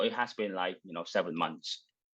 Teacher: it does put a little too much stress I think on the auxiliary where he says it has been about seven months instead of it's been about seven months. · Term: stress on the auxiliary